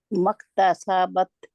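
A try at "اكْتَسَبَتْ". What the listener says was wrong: مکتسبت. تسا ابھی بھی آپ کا سا لمبا ہو رہا. تسا تسا تسا بت. تسبت. تسبت. تسبت. مکتسبت. جہاں پہ آپ نے مک یہ بھی نہیں کرنا کسی نے بھی, اس کا خیال رکھے. مکتسبت.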